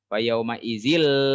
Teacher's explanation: Fayauma izil, kalau yang tadi mah yauma izi itu mah idgham bigunah. Kalau fayauma izil idgham bila gunah, tidak menggunakan gunah. Gunah teh dengung, tidak mendengung di sini mah ya. Fayauma izil tuh udah enggak mendengung.